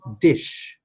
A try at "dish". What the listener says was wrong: It was the I sound.